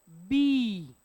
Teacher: ओठ एकमेकाला टच होतात आणि मग खाली येतात.